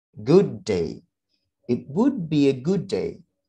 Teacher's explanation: Yang flap itu kita wave-kan suaranya, kita gelombangkan. Jadi seakan-akan ada suara nadanya itu berombak begitu, ya. Jadi naik kemudian landai.